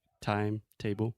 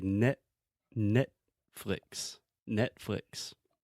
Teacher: this is what I call a soft tee almost a stop T where your mouth is more or less in the same position to produce a normal T sound